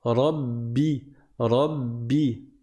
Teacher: quand tu fais une shadda sur le ba, il ne faut pas que ton ba se transforme en un P. Parce que parfois, certains, ils vont faire une lettre qui est entre le B et le P, entre le ba et le P qui n'existe pas dans la langue arabe.